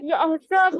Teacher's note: हा पे झटका नहीं आना चाहिए. यहसबु, आवाज चलती रहेगी.